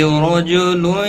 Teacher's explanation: را زبر کی وجہ سے پر پڑھیں گے۔ تنوین کے بعد حروف یرملون میں سے یا آیا ہے، ادغام با گنہ ہوگا۔